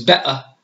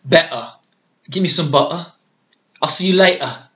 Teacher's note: instead of saying T's that are in the middle of a word or even at the end of a word, you replace it with the glottal stop. And what that means is you do a vowel sound, but then stop the air right away.